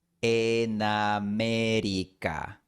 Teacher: lo más natural es mover la N a la siguiente palabra. Así tenemos una sílaba típica del español, consonante más vocal, na.